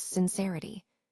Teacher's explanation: When we pronounce sincerity, we use the short I sound, which is more relaxed and quick